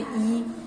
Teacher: हमारा जीभ जो है हमारी टंग जो है वो ऊपर लग जाती है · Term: तालव्य